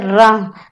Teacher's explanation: इसके उच्चारण में जीभ का कौन सा हिस्सा कांपता है, जीभ का आगे का हिस्सा, नोक वाला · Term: कंपन जात